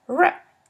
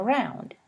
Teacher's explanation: The ones with a somewhat smaller opening are called liquids. The retroflex liquid is the sound r, as in round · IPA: /ɹ/